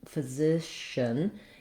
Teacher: The important thing in physician in this word is that my stress and my length, my clarity is all on that middle syllable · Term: second syllable stress